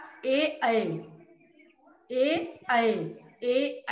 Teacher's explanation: जब बोलते हैं कंठ और तालु से टकराती है हवा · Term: कंठ तालव्य